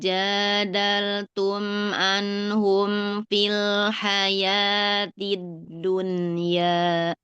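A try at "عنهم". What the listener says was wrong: Diulang Ibu, ainnya kayak Hamzah. Jangan anhum. Anhum.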